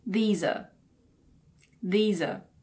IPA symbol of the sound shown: ə